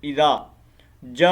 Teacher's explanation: اب دیکھیں اذا، اس کو ہم ایک الف کے مطابق لمبا کریں گے، اذا جا، اب یہاں پر اوپر مد ہے، ٹھیک ہے، یہ 4 الف کے مطابق مد ہے، اس کو مد متصل کہا جاتا ہے، اس کو ہم نے 4 الف کے مطابق لمبا کرنا ہے